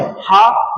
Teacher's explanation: हा को कहते हैं कंठ वर्ण, या हा का उच्चारण होता है किससे? कंठ से